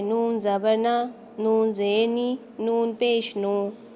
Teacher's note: ज़बान की जो नोक है वो जो सामने वाले दांतों के मसूड़ों से लग रही है